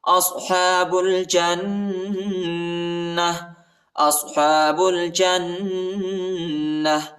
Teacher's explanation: اولئک اصحاب الجنہ، اصحاب الجنہ، با کو لام کے ساتھ ملائیں گے، الف نہیں پڑھا جاتا، الف کے اوپر حرکت نہیں ہے اور جیم کو نون کے ساتھ ملائیں گے، نون پر غنہ کریں گے، ٹھیک ہے، اور تا کو ہا پر تبدیل کریں گے وقف کی صورت میں۔